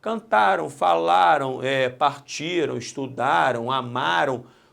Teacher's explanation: Repare que cantaram, se eu tirar o M e botar tio e ó, vai ficar cantarão. Então, este M, cantaram, representa foneticamente, no som, um O, aqui representado pelo W. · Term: ditongo fonético